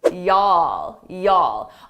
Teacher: in southern U.S the southern states it's very common to combine you all into one word